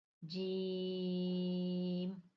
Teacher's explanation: جیم زبان کے درمیان اور تالو کے درمیان سے ادا ہوتا ہے۔ جیم، دیکھیں زبان جو ہے ہماری درمیان سے اوپر تالو کو لگ رہی ہے، غور کریں۔